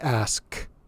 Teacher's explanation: So ask, if you pronounce that word, if you put your hand on your throat and say ask, when you make the K sound, your throat is not vibrating at all. It's not making a voiced sound. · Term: unvoiced sound